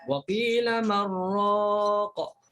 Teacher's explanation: kalau baca Syu'bah wa qila marraq, masuk terus ke ra. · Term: idgham bila gunnah